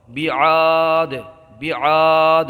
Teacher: یہ دال کی آواز جو آ رہی ہے یہی قلقلہ ہے۔ یہاں را کو پر پڑھیں گے، الف میں مدہ ہوگا، یہاں پھر حالت وقت میں رکنے کی صورت میں قلقلہ ہوگا اور ادغام کا قاعدہ ہوگا۔